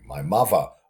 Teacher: labiodental fricative for the interdental